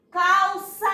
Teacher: Então, realmente, o sa é a sílaba em que eu me estendo mais. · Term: sílaba tônica